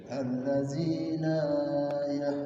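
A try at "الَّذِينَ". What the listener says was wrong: Jangan panjang-panjang aja. Allazina langsung.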